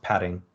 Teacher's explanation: you get this sort of merge neutralization of this contrast so both of those are pronounced padding with this flap in the middle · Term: tapping